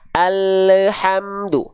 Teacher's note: Biasanya sifat inhiraf ini akan sangat terasa ketika dalam kondisi sukun untuk menghindari adanya pantulan pada huruf lam. Contoh, banyak orang melafalkan lam sukun itu sering memantul. Kenapa? Karena lidah dia keburu turun duluan.